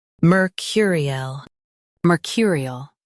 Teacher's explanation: Emphasize cur and soften il.